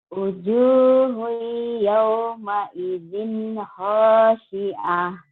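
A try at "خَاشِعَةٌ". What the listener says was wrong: Tinggal sinnya yang tidak ya. Kho-nya ngorok. Khasyi'ah.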